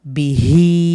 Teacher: উল্টা হা খারা জের হি মাদের হরকত এক আলিফ তাহলে দেখুন বিতে হবে না আবার হিতে টান হবে